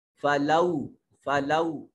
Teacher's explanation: میم بعدی، میم بعدی ذالک، ذال کے اوپر الف المدیہ الصغیرہ ہے، کھڑی زبر ہے۔ فلو، فلو واو ساکن ما قبل مفتوح، واو لین، اور لا الف خالی از حرکت ما قبل مفتوح، الف مدہ۔